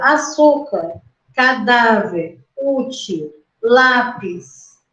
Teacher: a sua força respiratória tava na sílaba penúltima se estava na penúltima então eu tenho que acentuar tá perceberam